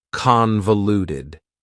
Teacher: convoluted also has four syllables and the stress is on the first syllable convoluted that second syllable again has that schah sound that reduced